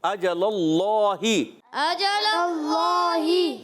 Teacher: اجل اللہ، حمزہ پر زبر، جیم پر زبر، لام پر زبر، حرکات بغیر کھینچے بغیر جھٹکا دی معروف ادا کریں گے. اللہ پاک کے لام سے پہلے زبر آ رہا ہے، اللہ پاک کا لام موٹا کر کے ادا کریں گے